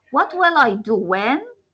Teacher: With more focus or more stress on what and when, on the question words. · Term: Echo question